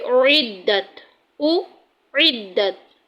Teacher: مخرج ہے وہ حلق کے درمیان والے حصے سے ادا ہوتا ہے، یعنی کہ pronounced from the middle part of the throat، کہ اعدت، اعدت، اس کی آواز او ہے، اس کو او نہیں کریں گے اور اس کو ای نہیں کریں گے، ان دونوں کی آواز میں فرق ہوگا۔